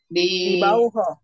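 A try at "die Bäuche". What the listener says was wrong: Bauhe. Ya, bauhe-nya juga A umlaut ya.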